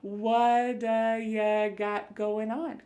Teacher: This is really typical of American English, where a T that's surrounded by vowel sounds is going to change to a D. It's called a flapped T, and it just kind of rolls off your tongue in a smooth way.